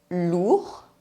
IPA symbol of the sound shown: u